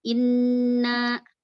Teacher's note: Nah, disebutkan gunnah akmal, gunnah kamil. Nah, disebutkan itu 3 ketukan.